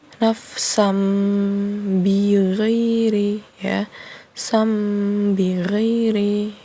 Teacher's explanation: Jadi ketika membacanya itu berubah hurufnya menjadi mim ya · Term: iqlab